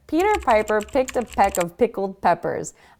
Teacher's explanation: the PE sound as it kind of explodes out of your mouth